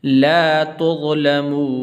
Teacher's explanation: یہاں پر اکثر لوگ غلطی کرتے ہیں لا جو ہے اس کو لمبا نہیں کرتے ہیں.